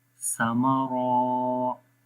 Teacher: زبر سا، میم زبر ما، ساما، را الف زبر را، سامارا، را کو خالی لمبا کریں گے، سا اور میم کو لمبا نہیں کریں گے کیونکہ را کے بعد الف ہے اور الف سے پہلے زبر